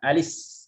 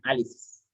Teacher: karena sebelumnya juga sukun, lamnya sukun, maka baris hamzahnya dipindahkan ke lam menjadi alis ya.